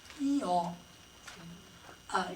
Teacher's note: When you go from a closed vowel to an open one, eh to ah, or e to ah to eh, or e to aw, e-aw, you're opening the front of the jaw